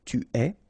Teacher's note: phonetically it's est, alright, quite open